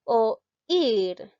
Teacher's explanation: La sílaba tónica, en este caso, llega a ser la i.